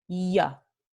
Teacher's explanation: when both double L and Y are pronounced ya, con la aproximante palatal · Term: yeísmo